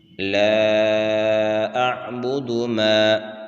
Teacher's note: لا مد منفصل ہے اور اس کو 3 الف کی مقدار یعنی 3 سیکنڈ تک اس کو کھینچ کر پڑھیں گے۔